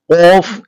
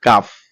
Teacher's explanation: কফ উচ্চারিত হয় জিহ্বার গোড়া উপরের তালুর সঙ্গে লাগিয়ে কফ উচ্চারিত হয়। আর কাফ উচ্চারিত হয় জিহ্বার গোড়া হইতে একটু আগে বাড়াইয়া উপরের তালুর সঙ্গে লাগিয়ে কাফ উচ্চারিত হয়।